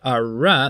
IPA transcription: ɹ